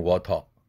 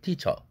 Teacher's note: 영국식 영어에서는 마지막 R 사운드는 또 내지는 않죠.